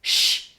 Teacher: Ensordecer significa que se ha vuelto sorda, es decir, que cuando la pronunciamos no nos vibran las cuerdas vocales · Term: ensordecido